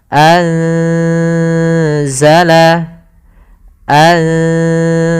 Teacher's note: Cara membacanya yaitu menyamarkan suara nunnya kepada huruf zal. Tidak lagi dibaca anzala, tapi dia samar ke zal. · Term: ikhfa hakiki